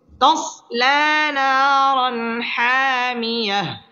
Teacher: তানবিনের বামে হা আসছে হা ইজহারের হরফ গুন্নাহ ছাড়া স্পষ্ট করে পড়তে হবে